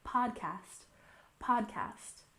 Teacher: remember the stress is on the first syllable